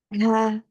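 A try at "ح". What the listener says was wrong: durasi H-nya agak lama untuk tekanannya. nggak boleh langsung ke fathah.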